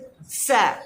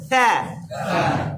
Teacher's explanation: জিহ্বার অগ্রভাগ উপরের দাঁতের আপনার অগ্রভাগের সঙ্গে লাগবে, বাতাস বের হবে কিন্তু কোনো সাউন্ড হবে না